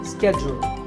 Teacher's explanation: In American English, this is schedule. The first syllable is ske and the second is jewel. Schedule. In British English, it can be both schedule or schedule.